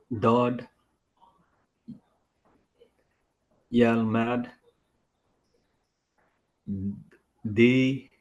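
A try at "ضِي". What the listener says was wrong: No, it'll be longer, right? It'll be elongated. No, not Lee, but same sound, blot, same from the side of our tongue, just elongated. No, not D.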